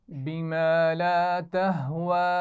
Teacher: واو پر کھڑا زبر ہے اور اس پر چھوٹی مد بھی ہے تو اس کو زیادہ کھینچ کر پڑھنا ہے